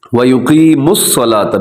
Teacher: میم کو ڈائریکٹ صاد کے ساتھ ملائیے گا, واو اس میں سائلنٹ ہے